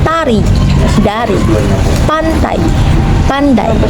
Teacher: Bedanya t bersuara dan d tidak. Keduanya dilafalkan dengan menempelkan ujung lidah pada bagian belakang gigi atas untuk menghambat udara dari paru-paru, kemudian melepas udara tersebut. Ada pula yang menempelkan ujung lidah pada gusi sehingga tercipta bunyi alveolar. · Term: konsonan hambat dental